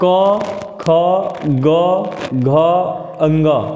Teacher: इन पांचों का उच्चारण स्थान कंठ से होता है। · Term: कंठ वर्ग